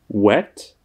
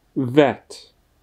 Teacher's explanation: to dvojité V vyslovíme tak, že vyšpulíme rty, jako bychom chtěli například někoho políbit, anebo říct U, hlásku U, ale místo toho potom řekneme V.